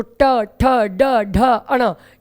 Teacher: है जो उठा हुआ भाग है उसको मूर्धा कहते हैं तो टा वर्ग के सारे अक्षर जो है बच्चों वो मुर्धा से उच्चारित होते हैं · हमारी जीभ मूर्धा पे स्पर्श करती है तो हम कह सकते हैं इनका उच्चारण स्थान मूर्धा है